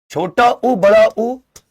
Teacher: छोटा उ बड़ा उ इनका उच्चारण ओठ से होता है।